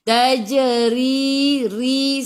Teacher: Ri ra baris bawah kena baca dengan nipis. Senyum tarqiq nama dia.